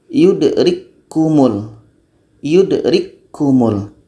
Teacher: Bunyi ka mati yang berangin tidak terdengar lagi karena sudah masuk kepada ka yang kedua. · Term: idgham kamil